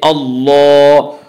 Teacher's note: زبر ہے، کھڑا زبر برابر ہے الف مدہ کے، اس لیے کھڑا زبر کو ایک الف کے برابر کھینچ کر پڑھیں گے